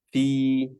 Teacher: Panjangnya 2 harokat mad tabi'i.